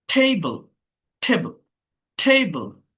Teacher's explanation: দেখেন first syllable stressed, অর্থাৎ প্রথম সিলেবলে স্ট্রেসটা আসে